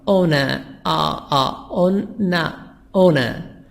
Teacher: We make the R silent in British accent, and we make a sound of schwa